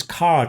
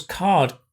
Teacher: when you have the voiced d at the end the vowel is longer